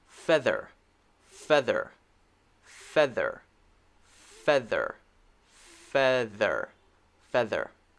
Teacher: my tongue is vibrating between my teeth very very quickly when i say that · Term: the one with the voice